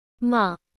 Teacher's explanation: The tone is consistent, just like opening your mouth at the dentist and saying A. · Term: Level monotone